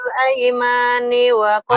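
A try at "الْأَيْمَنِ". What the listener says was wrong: Aimani, pendek. Aimani, nggak ada yang panjang. Aimani.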